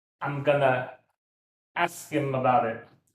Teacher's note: the only one you emphasize really is just ask